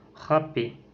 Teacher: Il y a aussi la voyelle A. Cette voyelle est postérieure et ouverte, arrondie et orale. Par exemple, dans les mots râpé.